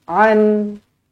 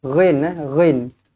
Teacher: ini bukan huruf ain, ini huruf ghin. Ghin. Ada getaran.